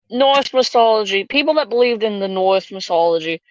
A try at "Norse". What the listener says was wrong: It's Norse, not North.